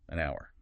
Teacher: Because the H is silent, it sounds like it starts with O.